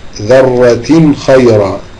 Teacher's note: تنوين أتى بعده الخاء والخاء من حروف الإظهار